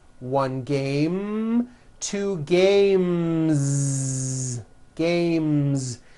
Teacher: The last sound you hear in the word game is the M sound, which is a voiced consonant. So because of that, when you add an S, the S should also be voiced.